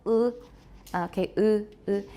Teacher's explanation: It does not have spread lips like e, but lips that are fairly close together, compressed vertically, 就是上下，它是有点被压缩, with the corners neither drawn back as in a spread vowel nor pulled together as in a rounded vowel. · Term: high unrounded vowel